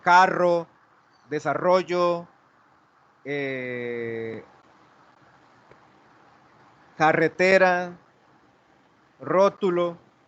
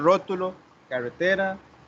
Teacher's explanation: se llama la R como africada y no vibrante múltiple